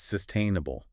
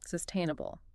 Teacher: The stress is right there in the middle.